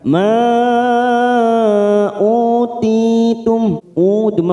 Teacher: Di sini ada mad yang bertemu dengan hamzah di lain kalimat namanya mad jaiz munfasil. Kita panjangkan empat harakat.